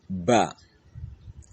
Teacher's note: This letter is being produced between upper and lower lips.